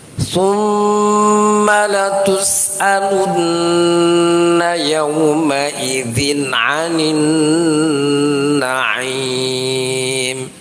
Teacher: ada Nun tasydid itu didengungkan dan ditahan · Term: gunnah